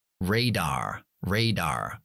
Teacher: si yo fuera estadounidense yo pronunciaría la r después de la vocal sería radar radar pero como yo soy británico no pronunciamos r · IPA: /reidaːʳ/